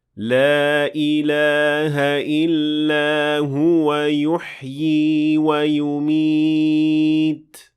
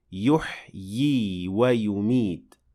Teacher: we pronounced 2 times ya, and the latter one is extended for 2 counts.